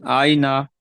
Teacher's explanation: ইয়া সাকিনের ডান দিকে জাবার আছে, তাই এটা ইয়ালিন, ইয়ালিনকে নরম আওয়াজে তাড়াতাড়ি পড়তে হয়। নুনের নুনের উপর জাবার আছে, জাবারটি হলো হারকাত, হারকাতকে টান না দিয়ে তাড়াতাড়ি পড়তে হয়।